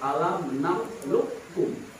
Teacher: Dan alam nakhluqukum boleh ya. Jadi idgham itu akan memasukkan dari huruf satu ke huruf yang lain. Jadi hurufnya akhirnya membaur antara qaf, jadi menjadi ke kaf.